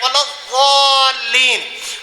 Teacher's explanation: زبان کا کونا اوپر والے دانتوں کے کونے کے ساتھ ملا کر ضاد کا مخرج کرتے ہیں والضالین، تو ایسے لگتا ہے جس طرح دعاد پڑھیا ہے، دال دے مشابہ ضاد نہیں۔